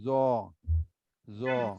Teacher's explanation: জিহ্বার আগা উপরে দাঁতে লাগতে হবে